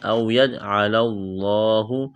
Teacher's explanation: لفظ اللہ کے نام سے پہلے زبر موٹا کریں گے